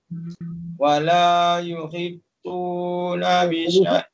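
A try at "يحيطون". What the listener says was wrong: Abang tadi yuhit tak nak, dia yuhi dia. Wala yuhituna bisyai'im min ilmihi illa bima syaa.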